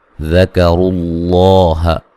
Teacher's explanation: ذکروا اللہ، لفظ اللہ کو موٹا ادا کریں گے، اس سے پہلے پیش ہے، اور را کو بھی موٹا ادا کریں کہ را کے اوپر پیش ہے